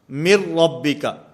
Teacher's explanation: میم کو را کے ساتھ ملائیں گے، درمیان میں جو نون ساکن ہے یہ ختم ہو جائے گا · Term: ادغام بلا غنہ